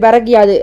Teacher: முதல் சொல்லின் இறுதியில் உள்ள கூ என்னும் எழுத்து இ என்று ஒளிக்கிறது. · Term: குற்றியல் லிகரம்